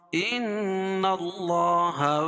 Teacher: نون مشدد ہے، اس میں غنہ ہوگا